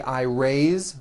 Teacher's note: even though it is spelled with an S it's pronounced with a voiced Z raise so we say I raise with a voiced Z ending